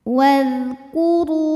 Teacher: Huruf ra dibunyikan secara tafkhim karena berbaris dhammah, maka dibacanya tebal. Wadhkuru. Ru matobi'i dhahiri karena ada waw sukun didahului baris dhammah, maka dibacanya panjang 2 harokat.